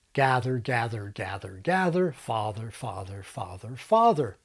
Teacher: But in General American, the length is roughly the same. American gather is longer than mine, and American father is shorter than mine.